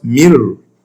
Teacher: nun sakina before ra. Nun will change automatically to ra.